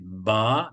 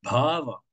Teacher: le sanskrit est toujours vocalisé à la fin, le A se prononce